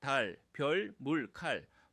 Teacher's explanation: 혀가 제 위치를 찾아가서 단단히 고정되는 것이 핵심입니다. 특징, 혀끝이 윗니 뒤 잇몸 치조에 닿은 채로 공기가 양옆으로 흘러나가야 합니다. 혀가 떨어지면 안 됩니다. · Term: 받침 소리